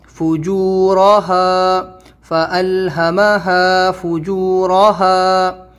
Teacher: یہاں پر را کے اوپر زبر ہے، را کو منہ بھر کے موٹا بولیں گے